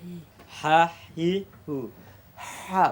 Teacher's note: বাতাস বের হবে দুইটা হা চাপ খাবে না